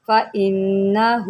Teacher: نون مشدد ہے، غنہ کریں